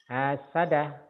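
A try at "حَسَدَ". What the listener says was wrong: Hasada, tak ini panjang Pak. Hasada. Hasada. Hasada.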